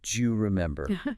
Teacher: do you very frequently reduces and links together to sound almost like Jew or maybe Jew.